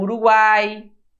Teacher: É semivogal, vogal e semivogal. Não tem essa de crescente, decrescente, não. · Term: tritongo